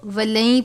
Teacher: نون ساکن کے بعد یا ہے حرف یرملون میں سے، نون کو یا سے ملا دیں گے، ولن نہیں پڑھیں گے بلکہ ہم اس کو ولن پڑھیں گے غنہ کر کے.